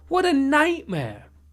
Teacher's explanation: What a nightmare. You'll often hear people stress night here to sound more emotional and expressive.